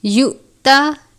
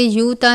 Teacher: حمزہ اور جزم ایک ساتھ ہو تو حمزہ ساکنہ ہوتا ہے، حمزہ ساکنہ ہو تو اس صورت میں حرف کو جھٹکا دے کر پڑھتے ہیں، تو ہم اس کو یؤتا اس طرح سے پڑھیں گے، یوتا نہیں پڑھنا بلکہ یؤتا پڑھیں گے۔